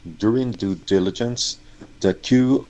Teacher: So maybe the th here turned to a D a little bit.